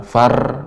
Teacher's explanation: getarannya lembut ee kecil tidak banyak getaran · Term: ro yang sukun